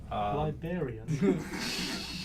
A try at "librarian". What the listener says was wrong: Yeah, I heard that as well. You missed out an R. Librarian.